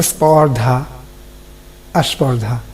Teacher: উচ্চারণের সুবিধার জন্য যদি শব্দের আগে বা আদিতে কোনো স্বরধ্বনির আগমন ঘটে, সেটা হচ্ছে আদি স্বরাগম